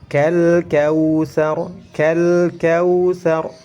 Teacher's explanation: lam sukun bertemu dengan kaf. Kaf ini termasuk ke dalam kategori qamariyah. Jadi harus dibaca jelas. Huruf lamnya harus jelas. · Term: hukum izhar